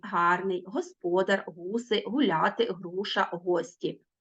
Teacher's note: звук г утворюється низько в гортані гарний господар гуси гуляти груша гості він ніби трішки м'яко звучить